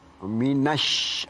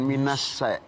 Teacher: Itu huruf shin. Minash, bukan minas ya. Ada sin, ada shin.